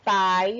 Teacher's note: Então, eu tenho pai, eu tenho A, que é vogal, e I, que é semivogal. Notem que a vogal está vindo antes da semivogal. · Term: ditongo decrescente